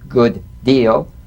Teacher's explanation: this is identical and cognate identical D to D good deal you don't need to fully pronounce the first D like good deal prepare the first execute the second good deal